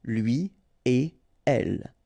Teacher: you don't make any liaison so no links after a